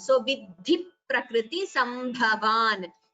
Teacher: dha is mahaprana, and here you have a dvitvam, that is a double sound.